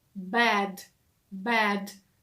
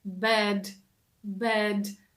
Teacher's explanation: тому що прикметник поганий вимовляється зі звуком е bad bad - це широкий такий звук е